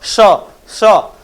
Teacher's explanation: मुख से क्या आती है गर्म हवा आती है तो इसको इसलिए उष्मीय व्यंजन कहा गया